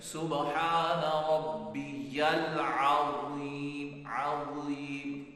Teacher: تو اس کے مطابق جب ہم پڑھیں گے زبان کی نوک تھوڑی سی باہر نکالیں گے اور زبان کا سرا جو ہے نا زبان کی نوک سے تھوڑا پیچھے وہ اوپر کے دانتوں کے کنارے پہ لگ جائے گا